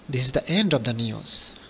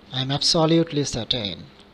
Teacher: the falling tone gives an impression of finality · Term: falling intonation